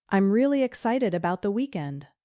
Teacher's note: Did you feel the stress on really and weekend?